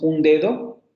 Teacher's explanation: Se nasaliza la vocal, el fonema se dentaliza